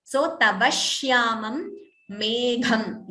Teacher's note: Dvitvam here again. Extra sh is heard before shyamam.